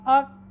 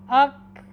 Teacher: دیکھیں زبان جو تالو کا سخت حصہ ہے وہاں پر جا کے رک گئی ہے۔ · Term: حرف کاف